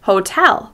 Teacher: You'll notice that tel is longer, louder and higher in pitch · we pronounce the word hotel with stress on the second syllable. You'll notice that tell is longer, louder, and higher in pitch.